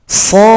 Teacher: Di sini cara baca harus diurai. Di belakang huruf Shad ini ada dal sukun. Kalau dari 3 huruf, Shad, alif, dal sukun. Panjangnya 6 ketukan atau 6 harokat.